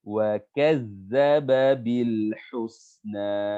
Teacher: hati-hati ujung lidah di antara dua gigi. Za, bedanya kalau za ujung lidah kita tetap di dalam ya. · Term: Zal